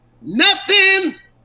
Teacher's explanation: If I'm singing it as a country singer, I'm going to take the G off the end, and I'm going to pronounce the O as a U